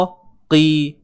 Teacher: Dia masih tebal tapi tidaklah setebal baris atas. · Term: huruf qaf baris bawah